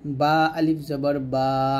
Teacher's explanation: বা টা দুই ঠোঁটের ভিজা অংশে মিল করে উচ্চারণ করবেন